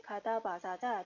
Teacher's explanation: 가다, 바사자, 특별히 강하거나 뭔가 단단한 듯한 느낌을 주지 않아요. 부드러운 느낌, 어감은 부드럽다 이렇게 연결을 하시면 되겠습니다. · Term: 예사 소리